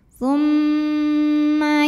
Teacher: disebut gunah aja ya atau Mim musyadadah atau wajibul gunnah ya karena ada mim bertasydid maka cara bacanya didengungkan jadi di sini bunyi M tahan kurang lebih dua harakat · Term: gunah musyaddadah, gunnah musyaddadah